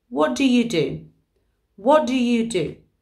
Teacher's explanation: the T at the end of what disappears because we've got the D at the beginning of do.